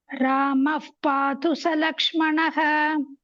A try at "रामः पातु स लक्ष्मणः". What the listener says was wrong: ராம பாத்து ச லக்ஷ்மணः. இஃப் sound வரக்கூடாது அந்த இடத்துல. ராம பாத்து. இப்பதான் இஃப் பிஹெச் இருக்கிற மாதிரி எஃப் சவுண்ட் வரக்கூடாது.